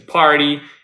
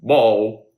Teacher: the P sound we're not going to have that much of vibration of our vocal cords. However, the B in ball will have more vibration than the first sound. So that shows why they are written here as a pair of sounds.